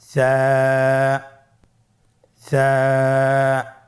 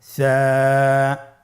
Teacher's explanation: সা হরফটির মাখরাজ হলো উচ্চারণের স্থান জিহ্বার আগা সামনের উপরের 2 দাঁতের আগার সঙ্গে লাগিয়ে উচ্চারিত হয়।